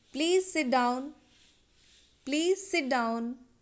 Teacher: you should be polite but the tone should be rising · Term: rising tone